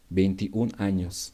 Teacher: We pronounce 21. We omit the last vowel in 21. We omit O and we just pronounce the other vowel